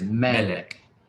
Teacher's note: it is pronounced with the emphasis on the first part of the word so they give you the little accent mark there that is